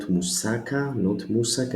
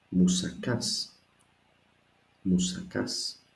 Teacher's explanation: No, it's not moussaka, not moussaka, it is moussakas. The accent is at the last alpha, so I cannot be confused. I know that I must stress, I must emphasize at the last alpha. So actually I keep my voice moussakas and I raise it a little bit to say so in the end, moussakas.